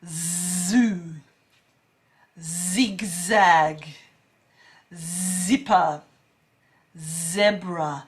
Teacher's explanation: i'm holding that z sound that vibration for about a second just so that you can hear it okay um at the